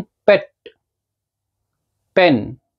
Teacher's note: जो प वाला साउंड है, अगर आप यहां पे अपने हाथ रखोगे, आप बोलो प और फिर बोलो ब। जब आप प बोलते हो, यहां पे आपको किसी तरह की कोई वाइब्रेशन फील नहीं होगी।